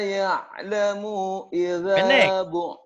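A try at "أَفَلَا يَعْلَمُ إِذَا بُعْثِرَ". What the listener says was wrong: Maunya pendek. Afala ya'lamu idha. Afala ya'lamu idza bu'sira ma fil qubur. Afala, afala, afala ya'lamu, afala ya'lamu idza bu'thira ma fil kubur.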